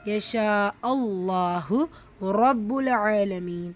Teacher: ரா ஃபத்ஹா பெற்று வந்திருக்கு, வல்லினமாக உச்சரிக்கணும்